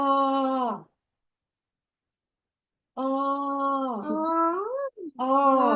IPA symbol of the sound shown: а